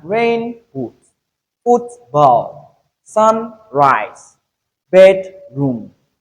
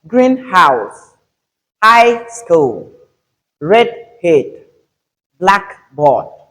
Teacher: when we have this kind of combination, the stress is normally on the adjective. That is the first word.